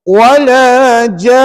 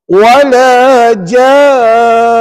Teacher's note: Cuma bezanya kat sini kita kena wakafkan. Wala ja tu kena 6 harakat.